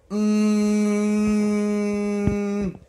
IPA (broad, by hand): m